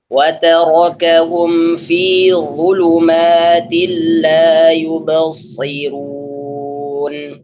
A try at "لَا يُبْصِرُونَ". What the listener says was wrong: Belum, itu tipis tuh. Coba la yubsirun. Lagi, Belum tebal itu. Roknya bukan shadnya. Roknya bukan shadnya. Ra yubsirun. Runya. Ra yang dhammah. Iya, itu yang saya maksudkan tadi. Karena ra yang dhammah itu dibaca tebal.